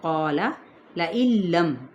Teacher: یہاں پہ کیا ہے ادغام بلا غنہ، نون ساکن کے بعد لام آ رہا ہے اس لیے